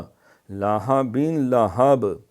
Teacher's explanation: یہ ہا حلبے والی نہیں پڑھنی، پیٹ سے ہے